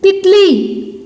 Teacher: त का उच्चारण बहुत फास्ट हो गया, ल का उच्चारण देखो स्लो हो गया। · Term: ई की मात्रा